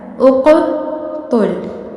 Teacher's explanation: یہ قاف حروف قلقلہ ہے اور ساکن ہے، اسی لیے آپ نے اسے ہلانا ہے